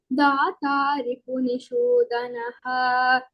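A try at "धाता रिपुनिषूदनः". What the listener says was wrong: Ha is Mahapranah. So in this dhata, that is Mahapranah. Ripuni Shudanah, that sh is also Mahapranah.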